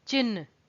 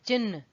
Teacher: च के बाद ह का स्वर आना चाहिए और न का बाद में